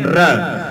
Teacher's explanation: हमारी जीभ है वो मूर्धा को घर्षित करती है